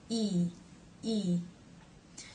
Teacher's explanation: the tongue doesn't touch the roof of the mouth but it's very close up there